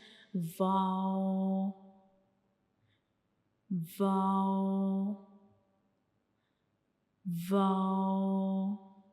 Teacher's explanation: जब हम वाओ को पढ़ते हैं तो हमारे जो दोनों होंठ हैं वो मतलब एक सर्कल बनाते हैं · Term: वाओ का मखरिज